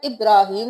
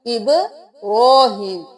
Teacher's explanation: با کو قلقلہ کرنا ہے، رو کو ایک الف کے برابر کھینچنا ہے اور موٹا بھی پڑھنا ہے، ابراہیم نہیں کرنا، ابراہیم۔